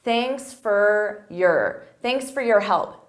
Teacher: at a natural pace native speakers we reduce sound so for becomes fur